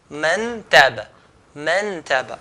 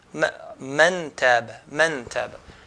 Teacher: I'm touching the tip of the tongue, okay, to the roof of the mouth. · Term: idhar